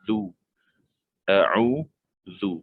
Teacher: Zai dengan zal berbeza. Zal lembut, keluarkan lidah sedikit. Kita kena keluarkan lidah sedikit.